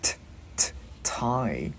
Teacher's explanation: Chữ t bật lưỡi giữa hai răng.